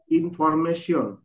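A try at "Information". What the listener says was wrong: আসলে মেশন হবে না এটা হবে আইন ইন তারপরে ফর এম মা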